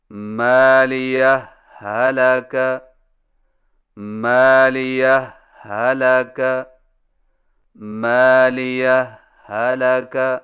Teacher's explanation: دو الگ الگ ہاؤں سے پڑھیں، لیکن پہلی ہا پر معمولی سا وقفہ کر کے لفظ حلقہ کی ہا کو بغیر تشدید کے پڑھیں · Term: اظہار